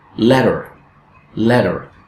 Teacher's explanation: the sound in let in that syllable is stressed while the schwa in the second syllable is unstressed